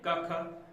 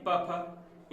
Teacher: जैसे कि प्रत्येक वर्ग की पहली प्रथम 2 ध्वनियां, यानी कि प्रथम 2 वर्ण, ठीक है, जैसे क वर्ग के क ख, प वर्ग के प फ, इनमें गले में कोई कंपन नहीं हो रहा, तो ये अघोष व्यंजन कहलाएंगे